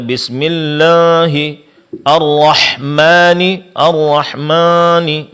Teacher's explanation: Pengucapan mad alif disertai dengan ada suara yang keluar dari hidung. Dan ini adalah kesalahan. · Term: ghunah